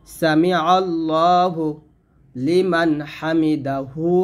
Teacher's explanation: এই যে আল্লাহ শব্দ লামের জবর আসছে মোটা হবে